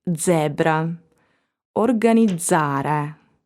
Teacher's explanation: It is always voiced in the suffix izzare